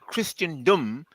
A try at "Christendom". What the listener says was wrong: Christendom. Sorry. The T is silent.